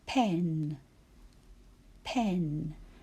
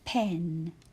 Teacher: there's quite a breath of air comes out of your mouth when you say it